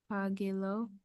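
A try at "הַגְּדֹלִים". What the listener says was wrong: Do. This is a dalid. It says hagedo. Hagedo. And then lamed with a hirik, which and hirik yud together.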